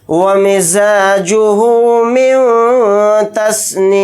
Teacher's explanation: यहाँ पर नून साकिन के बाद ता आ रहा है तो इसमें इख्फ़ा का कायदा हो रहा है क्योंकि ता इख्फ़ा के हरूफ में से एक हर्फ है। नून की आवाज़ को नाक में छिपाकर इख्फ़ा के साथ पढ़ेंगे, मीम को साकिन बनाकर पढ़ेंगे हालत वक्फ में।